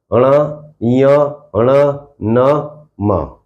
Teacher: इन सभी का उच्चारण नाक से होता है, तो इसलिए पंचम वर्ण नासिक्य होते हैं।